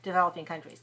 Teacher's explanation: So developing countries would be stressing on. We would usually stress the noun countries.